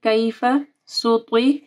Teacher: سین کو نرم پڑھنا ہے، طا کو موٹا پڑھنا ہے